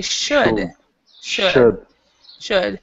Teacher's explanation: So the L is not pronounced at all. So you don't even have to try to do the L there.